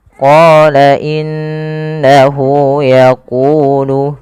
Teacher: Pada lafal qa kita panjangkan bunyi qa sepanjang 2 harakat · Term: mad tabi'i